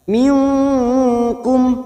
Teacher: ikhfa Hakiki kita samarkan bunyi nun sukun tiga harakat